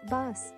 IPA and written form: bʌs (Bus)